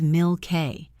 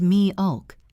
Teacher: A native pronunciation is mi o. The L is heavy and dark. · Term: dark L